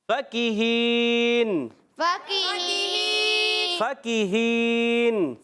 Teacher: فا کا مخرج اوپر دانتوں کے کنارے جب نیچے والے ہونٹ کے تر حصے سے لگتے ہیں تو ادا ہوتا ہے فا